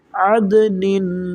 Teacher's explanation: تنوین کے بعد دیکھیں کیا آ رہا ہے، تا آ رہا ہے جو کہ حروف اخفا میں سے ہے تو یہاں پر ہم غنہ کریں گے